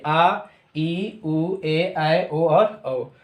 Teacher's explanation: दीर्घ स्वर जब बोला जाता है तो ह्रस्व स्वर से ज़्यादा समय लगता है और 2 मात्रा का समय लगता है